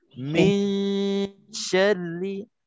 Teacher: Nun tu dengung, sambil kita dengung, kita dah masuk ke dalam shin. Dalam 2 harakat kita dengung tu, bibir mulut kita pun dah terbuka dah untuk nak sebutkan huruf ikhfa, iaitu huruf shin di sini.